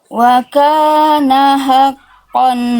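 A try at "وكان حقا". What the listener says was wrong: Hanya tegaskan lagi. Wa kana haqqan, hak kecilnya kurang tadi, kurang nyawanya kurang. Tekan lagi Bunda.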